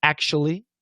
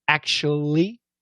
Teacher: much more common for Americans to do a dark L